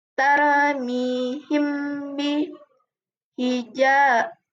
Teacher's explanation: Cara membaca ikhf syafawi yaitu samar-samar. Artinya pada saat membaca mim sukun disamarkan antara mim dan ba didengungkan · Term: ikhfa syafawi